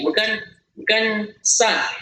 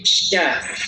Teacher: Terasa di tengah lidah, ya. Sama huruf shin, ya, berada di tengah lidah.